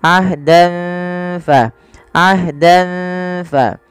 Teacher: Samarkan tanwinnya kepada huruf fa karena ia bacaan ikhfa yang di mana ada fathatain bertemu dengan huruf fa. Cara membacanya awalnya ahdan ditambah maaf disamarkan ke fa.